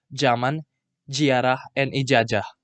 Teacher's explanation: in samosir the pronunciation of the consonant z is changed to j